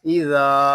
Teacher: زال کو ہم ایک الف تک کھینچ کر پڑھیں گے کیونکہ یہاں الف مدہ ہو رہا ہے